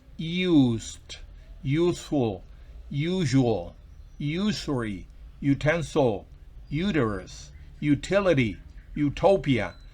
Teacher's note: Además, antes de las palabras use y sus derivados used, useful, usual, usury, utensil, uterus, utility, utopia, se usa a, porque estas palabras se pronuncian con una especie de y al inicio